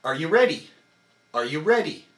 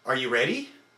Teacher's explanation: I am not contracting the core muscles on R or U or D, only on RE, which is the big sound in the big word.